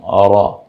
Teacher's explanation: জিহ্বার আগার পিঠ তার বরাবর উপরের তালুর সঙ্গে লাগে র, জিহ্বাটা একটু উল্টে যাবে, যেমন র।